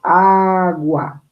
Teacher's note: nos damos cuenta que la U y la A están en una misma sílaba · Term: diptongo